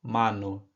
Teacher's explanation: Em espanhol, mesmo que a letra A venha acompanhada da letra M ou N, ela sempre terá um som aberto e não nasal